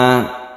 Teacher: ada al-ta'arif yang bertemu dengan Sin kita sebut dengan Idgham Syamsiah karena ini adalah idgham maka dia itu bertasydid